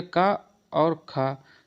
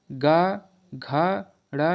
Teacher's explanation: ये पहले वर्ग के ये दो जो वर्ण हैं ये होंगे आपके अघोष, और बाकी के गा घा ड़ा ये आपके हो जाएंगे घोष